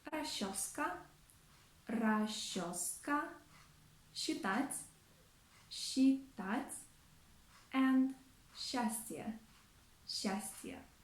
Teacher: the consonants s and ch standing together are often pronounced as sh